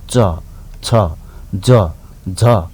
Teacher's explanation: जसरी उच्चारण गरेर हेर्नुहोस् त च गर्दाखेरि हाम्रो जिब्रोको टुप्पोभन्दा अलिकति मास्तिरको भागले दाँतको फेदमा छुन्छ कि छुँदैन त च छ ज झ।